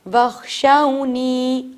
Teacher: اب نی کو بھی تھوڑا ٹائم دیں گے، تھوڑا سا اس کو کھینچیں گے کیونکہ یہ یا مدی ہے